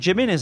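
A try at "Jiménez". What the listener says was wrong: It's a silent J. It's like Jimenez or however you want to say it.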